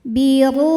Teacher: Huruf ra dibaca secara tafkhim karena ra berharokat dhammah. Maka ro ditebalkan. Biru, ru hukumnya mad tabi'i dhahiri, sebab ada waw sukun didahului harokat dhammah.